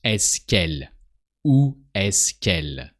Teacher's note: Où est-ce qu'elle travaille? So you shorten the que of est-ce que when the following word starts with a vowel. Here it's elle.